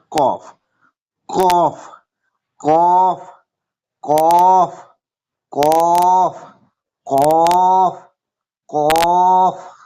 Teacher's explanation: কফ উচ্চারিত হয় জিভের গোড়া বা তার বরাবর উপরের তালুর সাথে লাগিয়ে উচ্চারিত হয়।